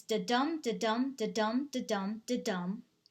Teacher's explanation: the da's are unstressed syllables and the dums are stressed syllables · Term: iambic pentameter